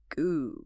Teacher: pay attention to the back of your throat when you do it. Feel how it completely blocks the airway. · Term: hard G sound